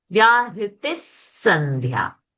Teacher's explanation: The T is short and after Visarga there is a Sakara. So Visarga will become Sa over here now.